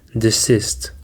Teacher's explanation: Desist contains two syllables and the stress is on the second syllable.